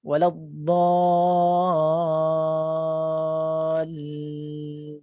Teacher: Jadi kita ada penekanan pada huruf lam, tapi tidak tertahan lama lah. Tak ada dallin, dia tak tertahan lama. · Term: tasydid